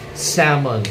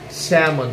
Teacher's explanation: It should be salmon, okay? Salmon, silent L.